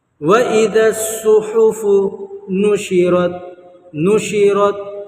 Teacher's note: وَإِذَا الصُّحُفُ نُشِرَتْ نُشِرَتْ، رت ایسے نہیں کرنا، نشرت آواز ٹکرا کر نہیں آنی، کیونکہ یہ حروف قلقلہ کے 5 حرفوں میں سے نہیں ہے۔